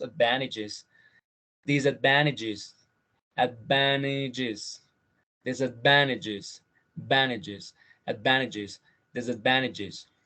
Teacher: Aquí estas dos, a veces, bueno, esto obviamente ocurre más en el inglés americano, cuando la N, when the consonant N goes before T, some people say that N eats T